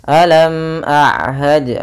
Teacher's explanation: mim mati bertemu dengan Hamzah maka kita namakan dengan bacaan idhar syafawi ya maka suara mimnya harus dibaca dengan jelas